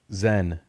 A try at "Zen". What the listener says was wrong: You're saying Zen with like an I,